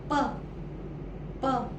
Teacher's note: आता काय होत आहे, हे दोन्ही जे ओठ आहेत ते एकमेकांना स्पर्श करतायत